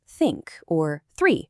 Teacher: It's not that vibrating th you get in words like the or that. So just remember, it's a nice, soft through. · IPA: /stɑːrt/